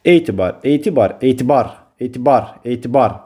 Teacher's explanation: Vurğu birinci hecəyə düşür. Birinci hecada var uzanma vardır. Uzanma ilə də vurğu üst-üstə düşmür. · bar hecası daha qüvvətli tərəf olunur. Yəni vurğunu qəbul eləyir.